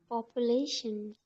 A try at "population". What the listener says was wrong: Yes, correct.